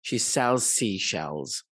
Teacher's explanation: the two s's here are pronounced as a single one letter or one sound